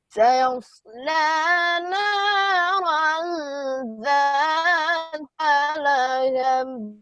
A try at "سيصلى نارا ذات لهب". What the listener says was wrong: یہاں پر غنہ بھی کرو نا. پھر پڑھو.